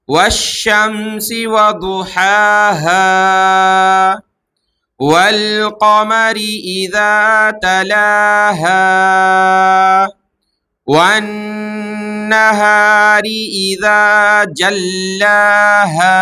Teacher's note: اسی سورۃ اللیل سے پہلے سورۃ الشمس، یہاں پر دیکھیں آخر میں جو حرف ہا اس پر زبر اور آخر میں الف ہے، تو تو ایک الف کی مقدار کھینچ کر کے وقف کرنا ہوگا